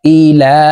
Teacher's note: লামের উপরে খারা জবর আছে এই কারণে এই লামকে এক আলিফ টেনে পড়বো